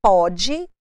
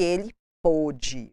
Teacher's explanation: a pronúncia diferenciada necessita-se de um circunflexo para fechar essa sonoridade da vogal O